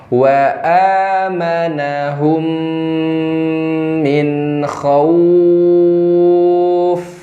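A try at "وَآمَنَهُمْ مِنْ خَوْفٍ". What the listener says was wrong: Huruf kha lebih jelas. Min kha. kasar, tebal.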